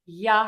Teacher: lips pulled back the tongue is high on the back and it is not touching the teeth in the front at all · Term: ya sound